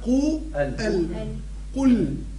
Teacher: كذلك كلمة قل كثير ما الناس يقرأ فيها غلط، يقولوا قل قل وهي تفخيم في القاف قا قو قو ال قل لفظها قو ال قل يعني فخم القاف وضمها ورقق اللام وسكنها